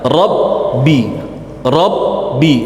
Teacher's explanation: Sifat ba ini syiddah jahr, artinya tidak ngalir suara, tertahan semuanya, aliran suara, aliran nafas tertahan.